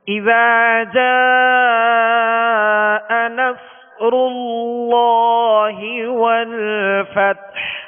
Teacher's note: صاد کو پر پڑھنا ہے اور سیٹی کی آواز میں پڑھنا ہے، را کو پر پڑھیں گے، را پر پیش ہے، اور فتح میں ہا کی آواز کو ساکن کرتے ہوئے اس کی آواز پر جو ہے آواز اور سانس دونوں توڑ دینے، یعنی اس کے مخرج پر آ کر ہا واضح ادا ہو۔